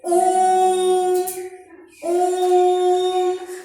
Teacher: अब ओम खींच के कह रहे हैं ज्यादा देर तक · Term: प्लुत स्वर